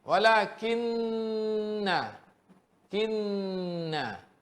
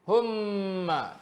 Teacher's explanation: Naik ke rongga hidung kan. Tapi kalau nun dia tak boleh tutup mulut macam mim. Sebab makhraj nun, tepi hujung lidah yang angkat ke atas.